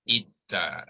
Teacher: so hamzah wasal ni hendaklah dibunyikan dengan i lah